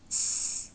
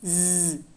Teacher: S is voiceless, Z is voiced.